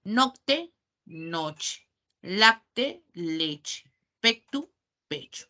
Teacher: la CT, esa secuencia, cambió a una che en el español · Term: cambios fonéticos